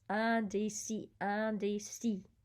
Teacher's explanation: So the IN is nasal, but then the I at the end is E, and remembering not to pronounce the S.